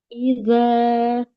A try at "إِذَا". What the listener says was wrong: Huruf zal jangan sampai bunyinya seperti da ya.